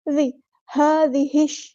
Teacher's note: هذه الشجرة، ہا پہ کھڑا زبر ہے، الف کے برابر لمبا کریں گے، ہا کو سمپل ادا کریں گے۔ هذه، ذال کو نرمی سے ادا کرنا ہے، سختی نہیں لے کے آنی ہے، زش نہیں پڑھنا